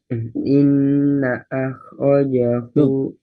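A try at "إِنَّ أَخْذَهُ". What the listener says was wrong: Kok ada khoknya? Nggak ada khoknya. Khoknya kan sudah disukun. Inna akhdahu. akhdahu. Inna akhdahu, bukan akhdahu. Inna akhdahu, bukan inna akhdahu, bukan. Tadi khoknya sudah disukun. Jadi khoknya sudah disukun. Jadi jangan dikasih harokat fathah lagi.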